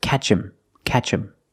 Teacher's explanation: him is not a stressed word, so the H is silent. So you hear catch him, catch him.